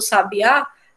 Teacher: quando a gente tem no Sabiá é a palavra que é uma oxítona a última sílaba é a sílaba mais forte